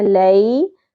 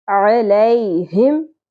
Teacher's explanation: عین باریکی سے ویسے حلق سے ادا کرنا ہے